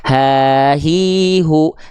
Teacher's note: Hak besar itu dilafalkan di pangkal tenggorokan